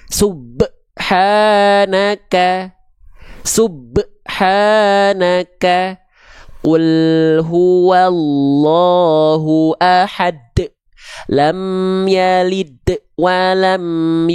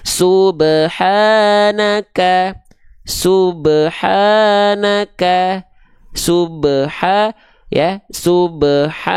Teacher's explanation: jangan sampai seolah melafalkan dia ada Hamzah sukunnya setelah ba sukunnya pantulannya jangan sampai tertahan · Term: qolqalah